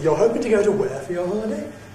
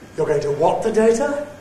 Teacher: So we say the statement back with a High-Rise and the Question-word at the place that we’re querying. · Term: High-Rise question